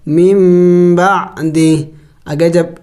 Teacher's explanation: یہاں پہ دیکھیں میرا سانس ختم ہو گیا. وقف میں نے اس ہا کو سائلنٹ کر دیا یعنی اس کو ساکن کر دیا